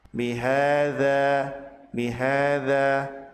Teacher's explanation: Ha disebut sebagai mad tabi'i, dibaca panjang 2 harokat.